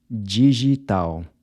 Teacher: Digital —remember the “d-i” is pronounced like a “j” and the “l” at the end sounds like a “w”—“di-gi-tal”.